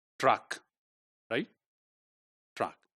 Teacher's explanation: So the stop t is made palatalized. It is spoken from somehow close to the palatal, right?